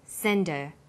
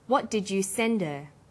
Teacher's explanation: send is the strong form and her is weak because her is not stressed we drop the initial H sound